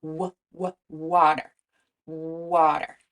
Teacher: For w, the tongue is pulled back slightly, but the air is flowing around the sides of the tongue, giving it that w sound.